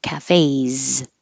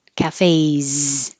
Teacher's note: And what looks like an S sounds like a Z. Cafes. So if your voice is on, leave it on.